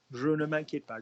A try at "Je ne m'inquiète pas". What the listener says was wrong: Good. Man, not mon.